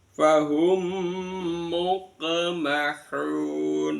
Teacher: Idgham mimi ee idgham dimasukkan di bibir.